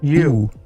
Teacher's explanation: The typical American U is pronounced at the far back of the mouth, pronounced like oo.